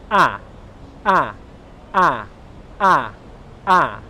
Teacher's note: My tongue is at the front of my mouth, and my mouth is open. It's not completely open, it's not like that, but it's 3/4 of the way open. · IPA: '/æ/', /æ/